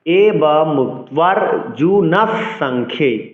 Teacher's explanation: বিসর্গ এর পরের ব্যঞ্জনটির দ্বিত উচ্চারণ করতে হবে অর্থাৎ পরের ব্যঞ্জনটির দুবার উচ্চারণ করতে হবে